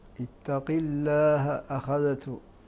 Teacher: الله وقع بعد كسر فحكمه الترقيق للجميع